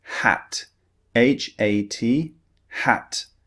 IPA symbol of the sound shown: æ